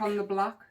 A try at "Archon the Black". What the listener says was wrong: Archon, not Archeon.